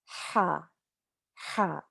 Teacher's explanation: ha comes from the back of your throat